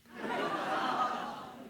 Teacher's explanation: this bilingual speaker of English and Spanish is clearly creaking at the ends of certain phrases